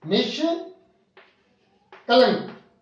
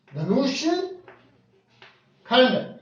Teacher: जो विसर्ग है मूर्धन्य स्वरहित स में बदलेगा